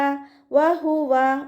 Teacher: ഹ സൗണ്ടിനെ clear ആക്കിയിട്ട് തന്നെ ഉച്ചരിക്കുക ഹംസയുടെ sound ആയി പോകരുത്